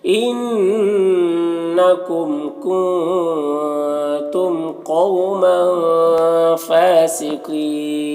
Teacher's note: قاف کو اوپر پڑھیں گے، حروف مستعلیہ میں سے ہے، اور یہاں پر وقف کی صورت میں مد عارض وقفی ہوگا